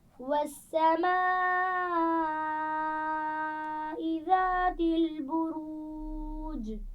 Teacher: والسماء ایک بڑی مد ہے، تھوڑا سا زیادہ کھینچ کر پڑھیے اس کو